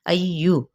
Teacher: 4 حرکت لمبا کرتے ہوئے حمزہ کی زبر کو یا کے ساتھ ملائیں گے، آواز کو اٹھاتے ہوئے